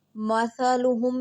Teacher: سا باریک اور نرم پڑھیں گے، اس میں سیٹی کی آواز نہیں لے کر آئیں گے۔ مثلہم، میم ساکن ہے، اس کو ہم نے نہیں ہلانا۔